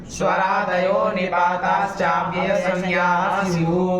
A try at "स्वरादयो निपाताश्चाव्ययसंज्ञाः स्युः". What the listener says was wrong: निपाताश्चा बोलते हो और फिर अव्यय, शुद्ध का बादशाह क्या, हाँ, या तो साथ में बोलो या तो तोड़ के बोलो, खिचड़ी मत पकाओ। संज्ञाः स्युः, ये साफ रहेगा ना। हल्का सा अलग कर देंगे ना तो थोड़ा साफ रहेगा क्या करना चाहे, वरना चाविये चाविये करेंगे कुछ नहीं समझ में आएगा क्या कर रहा है।